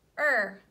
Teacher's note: R takes over. So we don't hear the U. F, f, er. Fur.